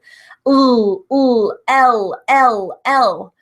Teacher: Your tongue needs to be pushing up behind your top front teeth and be touching where the roof of your mouth meets the top of your teeth. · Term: L sound